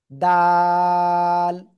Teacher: জিহ্বার আগা উপরে দুই দাঁতের গোড়ার সাথে।